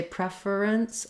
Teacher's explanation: there can be a little small schwa in there if you have a preference for using three syllables rather than two